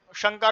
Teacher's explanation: ये तालु से बोला जाता है ये शकार। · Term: तालव्य शकार